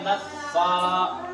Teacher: فا کے اوپر دیکھو کھڑا زبر ہے تو فا کو ایک الف کے برابر کھینچیں گے